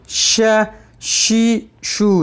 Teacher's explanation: شین کو جب ادا کریں گے آواز منہ میں پھیلے گی